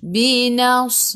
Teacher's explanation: Beza dengan sin. Sad dia tebal.